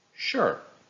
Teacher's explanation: the librarian started with a falling intonation sure it is showing certainty